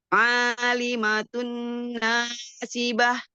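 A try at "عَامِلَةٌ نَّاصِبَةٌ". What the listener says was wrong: Ami bukan Ali. Amilatun nasibah.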